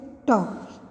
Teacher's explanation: हिंदी की मूर्धन्य अल्प प्राण अघोष स्पर्श ध्वनि है